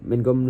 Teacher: Kemudian ada minkum sini baca ifa haqiqi karena nun sukun bertemu huruf kaf dibaca samar dengan dengung